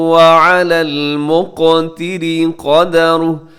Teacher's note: مقتری میں قاف ساکن ہے اور موٹا بھی پڑھا جائے گا، قلقلہ بھی کیا جائے گا